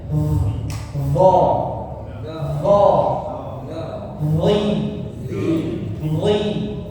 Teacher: Kemudian berikutnya diperhatikan dengungnya juga sama huruf d ya sekarang d sama seperti huruf dod tebal d coba d di makhrajnya keluar dari mana huruf d ujung lidah dengan ujung gigi seri atas gigi depan Ya, ujung lidahnya seperti bergesekan dengan giginya ya.